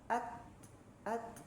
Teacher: Nah, huruf ta ini pertama kalau dari segi sifat ya, sifat yang pertama yang dia ee miliki adalah ee dia itu haes dari segi nafas ya, hames dia. Jadi ketika huruf ta disukunkan, maka si huruf ta itu keluar udara ya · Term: hamas